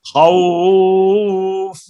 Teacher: ٹھہر گئے، اب یہ فا ساکن ہو گئی، واو لین ہے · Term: مد لین عارض